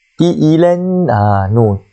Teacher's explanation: Nun tu kan ada nun musyaddadah kan. Jadi kita kena wajibul ghunnah dia. Dengarlah 2 harakat kat situ.